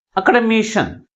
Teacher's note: But which one is pronounced with a greater force? That is, fourth syllable is pronounced with a greater force comparing with other syllables